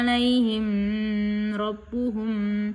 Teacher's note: Cara membaca ikhfa syafawi ini dengan cara samar antara mim dan ba pada bibir. Kemudian ditahan selama kira-kira dua harakat dalam ketukan seraya mengeluarkan suara ikhfa dengan pangkal hidung.